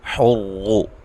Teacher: را کو خوب موٹا ادا کریں، را کے اوپر پیش ہے